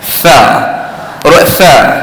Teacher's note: Bila sa tu kita tolak angin keluar.